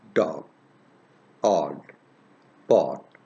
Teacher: dog odd part so remember this one that this is rounded lips are in rounded position and in half open position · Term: short vowel